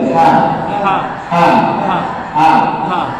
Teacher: Kita sebut ha. Dia makhrajnya dari dalam tenggorokan, pangkal tenggorokan.